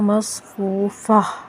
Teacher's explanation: جب ہم وقف کرتے ہیں تو ہا پڑھتے ہیں اور ساکن کر کے پڑھتے ہیں، ٹھیک ہے۔ مصفوفہ، ٹھیک ہے، ہا پڑھ رہے ہیں اور ساکن ہو رہی ہے۔